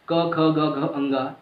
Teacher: जो क वर्ग है पूरा, क, ख, ग, घ, अंगा, इन पांचों का उच्चारण कहाँ से होता है? कंठ से होता है, और कंठ यहाँ पे है, ठीक है।